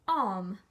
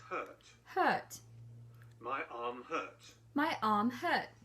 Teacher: And the next is the letter R. R. Brits don't sound it when it's followed by a consonant.